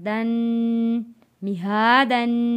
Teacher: دال پر غنہ ادا کیا